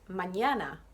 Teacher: the second syllable of the word is emphasized it's pronounced a little bit more strongly than the other syllables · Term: word stress